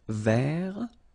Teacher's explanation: So masculine form, don't pronounce the final T.